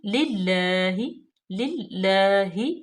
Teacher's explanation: اللہ کی لام اسم جلالہ کو تھوڑا سا لمبا کریں گے کیونکہ یہ کھڑی زبر ہے، اس کے اوپر کھڑی حرکت ہے، تو اس کو ہم للہ، للہ، ٹھیک ہے۔